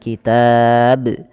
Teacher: Maka panjangkan dulu t-nya baru matikan ba dengan bacaan qalqalah yaitu memantulkan huruf bnya. Maka tidak dibaca kitab saja tapi dia harus ada pantulan kitab.